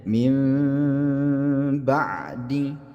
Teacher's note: nun mati bertemu dengan ba ini juga didengungkan, tapi hukum bacaannya adalah iqlab